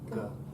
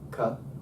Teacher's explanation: Can you see how your vocal cords are activated for the g? They're not on the k.